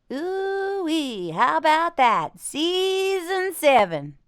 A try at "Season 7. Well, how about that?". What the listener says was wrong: Yours is getting a little bit southern. Well, how about that?